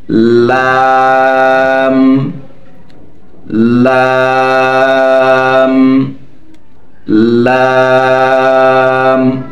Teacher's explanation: জিহবার আগার কিনারা সামনের উপরে দুই দাঁতের গোড়ার সঙ্গে লাগাইয়া অথবা দুই দাঁতের মাড়ির সঙ্গে লাগাইয়া উচ্চারিত হয়